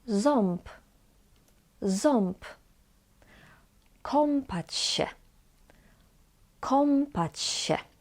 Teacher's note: when on is followed by B or P, we pronounce it as om.